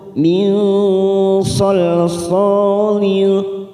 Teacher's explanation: nun bertemu sad, ikfa ausat, kita samarkan 3 ketuk. Min salsalin, sa fathah diikuti alif 2 harakat.